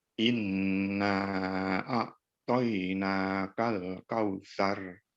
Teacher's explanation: pada huruf nun yang bertasydid itu juga ditahan lebih lama lagi ya Inna a'toina kalkausar iya lanjut nol Lili rompi kawan hard